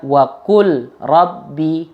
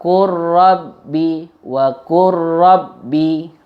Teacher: Jadi lamnya ini langsung masuk ke dalam huruf ro-nya karena ada lam yang disukun yang bertemu dengan ro. Lam dan ro ini mutaqaribain, sama-sama di ujung lidah yang bertemu dengan langit-langit.